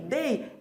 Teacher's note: é o E que é tônico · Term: vogal tônica